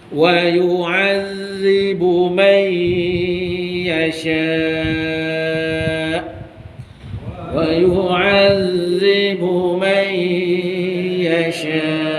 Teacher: nun kosong jumpa ya, masukkan dengan dengung 2 harakat ya.